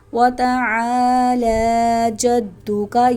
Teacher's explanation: عین الف زبر یہاں الف مدہ ہے اور لام کھڑا زبر، دونوں کو لمبا کریں۔